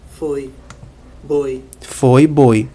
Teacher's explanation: decresce da letra O para a semivogal i